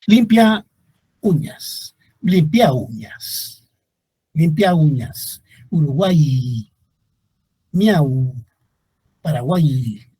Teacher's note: observamos que las tres vocales se convierten en un solo sonido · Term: triptongo